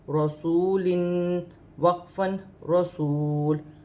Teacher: وقف کی صورت میں دو زیر کی تنوین گر جائے گی اور لام ساکن ہو جائے گی